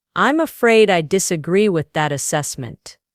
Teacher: Practice using a slightly firm lower tone on afraid and disagrees.